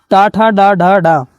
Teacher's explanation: तालु के पीछे वाला भाग जिसे कहते हैं मूर्धन्य, टा, ठा, डा, ढा, डा, और यहाँ पर ऋण, इनका जो उच्चारण स्थान है मूर्धन्य से होता है।